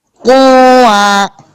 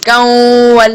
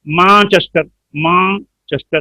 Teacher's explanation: आवाज को नाक में छुपाकर गुन्ना ज़मानी के साथ अदा करना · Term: इख्फाए हकीकी